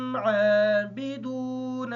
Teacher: عین کو کلیئر کریں گے تاکہ حمزہ کی آواز ادا نہ ہو۔